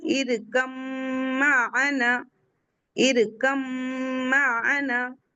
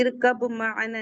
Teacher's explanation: یہاں با نہیں پڑھیں گے ہم کیونکہ با میم میں چلی گئی ہے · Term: ادغام